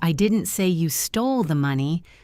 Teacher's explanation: stressing stole, it implies maybe you borrowed it or lost it, but you didn't steal it